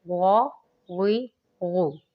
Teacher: اس کے بعد ہے غائن۔ غائن کو بھی ہم لوگوں نے پر پڑھنا ہے، یہ حروف مستعلیہ میں سے ہے۔